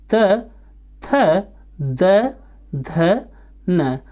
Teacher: दंत से उच्चारित होने वाले स्वर और व्यंजन